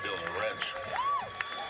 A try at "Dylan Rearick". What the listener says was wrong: They may need some pronunciation help on the opposing side there as they just pronounced the disruptor, Dylan Rearick's name is Dylan Wrench.